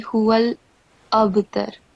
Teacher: don't forget to perform kalkala on the ba here